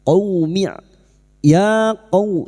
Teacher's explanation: Huruf qof yang berharakat fathah bertemu wau sukun huruf lin kita lunakkan